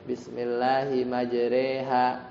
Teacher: yang dibaca imalah yang bacanya e ya